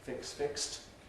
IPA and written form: fɪkst (fixed)